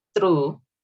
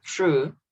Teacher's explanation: if you want to sound native, you don't say the R with the roll. So not true, but true.